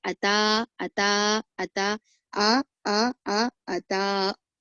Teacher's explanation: अताहुम में ता खींचना है, हमजा को नहीं खींचना है, पर अक्सर लोग कैसा पढ़ते हैं, अक्सर लोग आताहुम पढ़ते हैं, आताहुम, ऐसा नहीं, आताहुम नहीं बल्कि अता, अता, अता, आ अता, इस तरीके से आपको पढ़ना है।